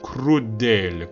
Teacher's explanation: 크루델 할 때 크루델에는 에가 열려 있어요. 그리고 이 열려 있는 발음이기 때문에 이 D 발음이 조금 더 세게 발음이 됩니다.